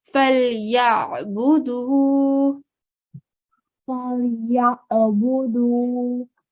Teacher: And try not to give like a jerking sound, just a simple joining of Ya and Ain, but make sure to give the sound from the middle of the throat · Ain as well has a very specific sound. And the sound comes from the middle of the throat.